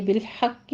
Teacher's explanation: بالحق میں حا کو وسط حلق سے ادا کیجئے